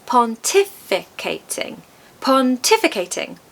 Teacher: It has 5 syllables, quite a few. As with many long words, we're going to stress the second syllable.